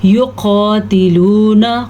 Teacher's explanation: قاف کو پر پڑھیں گے اور واو مدہ کو ادا کریں گے